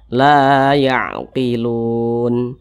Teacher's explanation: Kalau membaca Al-Quran berjumpa dengan alif, di belakang alif ada huruf yang memiliki tanda baca fathah, maka huruf tersebut dibaca panjang. La matobi'i, panjangnya 2 harokat atau kira-kira 2 ketukan.